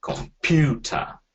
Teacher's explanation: the first sound will be a reduced sound, the middle sound will be the full sound, and the last sound will be reduced again